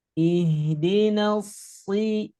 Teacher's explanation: Kalau shad tebal, kalau sin tipis. Ihdinal si pangkal lidahnya diangkat. Jadi pangkal lidahnya diangkat.